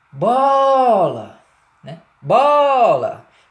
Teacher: Portanto, ele vai ser uma vogal tônica. Já o A, né, da última sílaba, não tem tonicidade representativa, né? É uma tonicidade muito branda, muito simples.